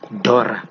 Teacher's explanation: in Shona, for example, L is considered baby-like, and so even a dollar is pronounced Dora